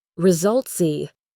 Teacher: The s at the end of results has a z sound. Result z. And that sound can link to the next word B.